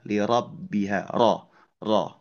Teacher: di ayat 2 lirabbiha huruf rnya tebal